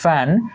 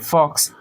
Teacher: উপরের দাঁত এবং নিচের ঠোঁট একসাথে করে